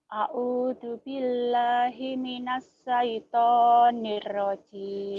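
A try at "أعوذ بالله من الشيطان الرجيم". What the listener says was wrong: Shinnya ya, Himinash.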